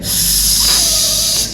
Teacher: it's an alveolar sound and when it comes to energy it's it's actually a voiceless sound where the vocal cords do not vibrate when we're pronouncing it